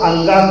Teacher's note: जब काठा आधा अंगा पढ़ा जा रहा तो अंगा कंठ से भी बोला जा रहा है, तो अंगा कंठ से भी बोला जाता है और नाकों से बोला जाता है। वही तरह जब इचु ऐसा नाम तालु पढ़ा जा रहा है तो इया का उच्चारण स्थान तालु आए और इया का उच्चारण स्थान नासिका आए, तो दोनों जगह से बोला जाता है।